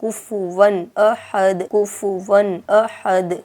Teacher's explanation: اور جیسے سورۃ الاخلاص آیت نمبر 4 میں آپ دیکھ سکتے ہیں کفوا احد، واو پر 2 زبر کی تنوین ہے، اور تنوین کے بعد حروف حلقی کے 6 حرفوں میں سے حمزہ ہے، تو یہاں پر ہمیں تنوین کو صاف پڑھنا ہے، ظاہر کر کے پڑھنا ہے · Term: اظہار